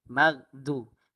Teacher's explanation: huruf ghain ialah huruf yang isti'la. Di mana tempat keluar dia ialah di leher. Di leher. Leher kita ada 3 bahagian.